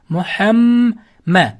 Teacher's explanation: Endi bu yerda muhamma sukunlik mim harfidan so'ng yana bitta mim harf kelib qolsa, ikkita mimni birlashtirib g'unna bilan o'qiymiz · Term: Idg'om shafaviyya